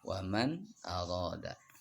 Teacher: nun matinya dibaca jelas, tidak boleh dibaca dengung. Jadi nggak boleh dibaca waman arada.